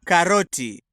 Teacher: Note the dental unaspirated T sound here.